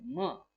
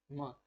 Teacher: हालांकि ये प्लोजिव नहीं है, ये क्या है, नेजल साउंड है म। तो म को भी प और ब की तरह ही प्रोनाउंस किया जाता है, इसलिए इसको भी बायलेबियल में रखा जाता है